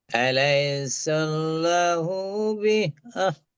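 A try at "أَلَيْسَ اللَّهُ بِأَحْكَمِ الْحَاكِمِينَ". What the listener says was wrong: আলাইসাল্লাহু বিআহকামিল হাকিমিন, কা ওটা কফ নয়, কামিল হাকিমিন।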